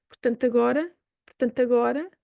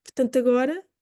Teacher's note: It can be very soft, and because the following word starts with a vowel, we can simply marry the two words.